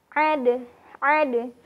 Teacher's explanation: Kalau huruf zal dilafazkan dengan cara menempelkan ke bagian dinding gigi atau ujung gigi serinya, sementara huruf dal dilafazkan dengan cara menempelkan bagian ujung lidah ke bagian gusi gigi seri atas